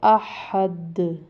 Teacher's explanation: یہ جو دال پہ ہم نے اس کو تھوڑا سا قلقلہ کیا ہے، یہ چونکہ دال جو ہے نا حروف قلقلہ میں سے، ٹھیک ہے، حروف قلقلہ میں سے ہونے کی وجہ سے ہم اس کو جب ساکن کریں گے تو قلقلہ کریں گے۔